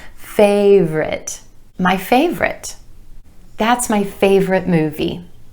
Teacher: 2 syllables here with emphasis on the A sound in the first syllable